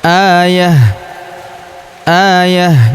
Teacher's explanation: tanwin un ta marbutah ya kita sukunkan dan kita rubah menjadi ha sukun karena di sini terdapat tanda wakaf atau disebut tanda berhenti ya yaitu tanda berhenti atau tanda wakaf qala.